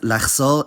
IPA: laχˈsɔʁ̞